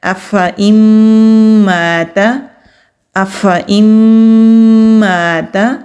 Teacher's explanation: ہم نے فا کو ادا کرتے ہی حمزہ کو ادا کر دیا، ہم نے اس کو کھینچ کر یہ لمبا کر کے نہیں پڑھا